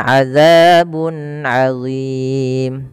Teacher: Kemudian adzabun adzim bun ketemu dengan ain. Jelas di sini tanwin bertemu ain maka dinamakan dengan izhar halqi. Maka suaranya tidak boleh ditahan-tahan, harus diperjelas.